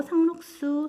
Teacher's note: 자, 상록수 했을 때 상록 더하기 수겠죠. 상록수, 수 발음 나면서 된소리 되기가 됐어요. 자, 그런데 상록에서도 니은으로 발음이 바뀌었죠.